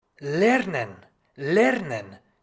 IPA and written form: ˈlɛʀnən (lernen)